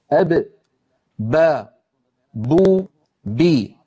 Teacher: با دونوں ہونٹوں سے ادا ہوتی ہے. اس طرح کے دونوں ہونٹ آپس میں ملتے ہیں. زبان کو دیکھیں، جب با ادا ہوتی ہے تو زبان بالکل سکون میں ہوتی ہے. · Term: با کا مخرج